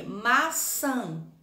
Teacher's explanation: A sílaba tônica é no san. É a última sílaba. Então, essa já é uma oxítona.